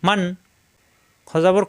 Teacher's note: এই নুন সাকিনের পরে খ আসছে ইজহার স্পষ্ট হবে কোন গুন্না হবে না